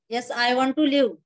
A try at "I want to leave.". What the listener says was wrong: I want to leave. इतना rudely नहीं बोलना है, उसको थोड़ा सा अच्छे से स्माइल के साथ बोलना है. I want to leave. ऐसे I want to leave. इतना अच्छा कॉन्वर्सेशन चल रहा था, बेचारा डर जाएगा ना. So we have to be very nice and very light to that person.